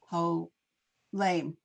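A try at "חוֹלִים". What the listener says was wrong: And it's not ho, it's cho. Cho leam.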